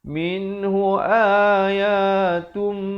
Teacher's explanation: Hukumnya idgham bi gunnah. Apa maksudnya? Masuk beserta dengung dua harakat.